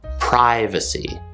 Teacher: whereas in american english it's pronounced with a long i sound